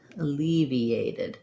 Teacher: when i go from ea you can hear there's a little bit of a yup sound in there it's not written in because then i just naturally get eea